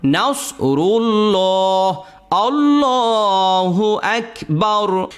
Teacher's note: তা আমরা তো একটু আগেই শিখলাম যে আল্লাহ শব্দের ডানে যদি জবর থাকে অথবা পেশ থাকে, তো এখানে রয়ের মধ্যে পেশ আসছে, তো আল্লাহ শব্দের ডানে পেশ থাকার কারণে এই লামটাকে মোটা করে পড়বেন